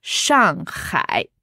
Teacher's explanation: Alors, Shang. 4e ton. Ouais. Hai. 3e ton. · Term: 4e et 3e